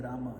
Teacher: If you listen very carefully and slow it down, he's saying Rama. The Ma is very short, but he says it. So we should say the Ma.